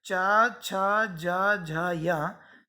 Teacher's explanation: फिर चा, छा, जा, झा, या, ये कहलाते हैं तालव्य, क्योंकि इनके बोलते समय वायु तालु को स्पर्श करते हुए निकलती है, तालव्य वर्ण।